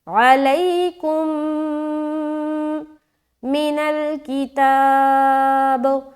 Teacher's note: میم ساکن کے قاعدے ہم لوگوں نے پڑھے ہیں نا نورانی قاعدے میں، یہ دیکھیں میم ساکن ہے اور اس کے بعد دوسری میم ہے، یعنی کہ ایک اور میم آ گئی۔ تو جب بھی میم ساکن کے بعد میم آ جائے دوسری میم، تو میم کو میم سے ملا کر غنہ کے ساتھ پڑھا جاتا ہے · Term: ادغام شفوی